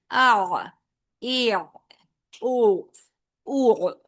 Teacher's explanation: حمزہ کو پہلے آواز ہے اور پھر وسط حلق سے عین کی ادائیگی